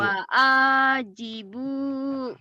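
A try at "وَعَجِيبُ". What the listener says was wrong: Pendek. Yang panjangnya ujungnya dong. Wa'ajibu gitu. Tekan di ujung.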